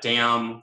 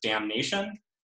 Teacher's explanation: the deletion of n in word final MN clusters in English which is responsible for giving us alternations like dam versus damnation